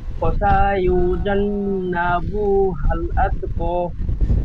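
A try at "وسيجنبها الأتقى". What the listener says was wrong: ওয়াসায়ু, সিন ঠিক এমন ভাবে টান হয়ে যাচ্ছে, সিন টান হবে না। ওয়াসায়ু সরল ভাবে বেশি।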